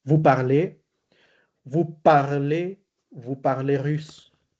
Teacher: terminación EZ, lo digo con una E cerrada, se pronuncia.